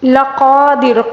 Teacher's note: قاف کو پر پڑھیں گے اور را کو باریک پڑھیں گے